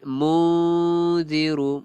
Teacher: munziru nun mati bertemu za pun ikhfa hakiki